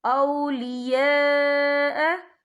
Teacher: یہ مد جو ہے مد متصل ہے، اس کی مقدار 4 حرکت کے برابر ہے، تو ہم اسے 4 حرکت کے برابر کھینچ کے پڑھیں گے۔